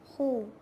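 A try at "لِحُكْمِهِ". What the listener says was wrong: Dia tak ada daripada dalam. Dia tak keluar daripada makhraj. Kat luar ni je. Hu.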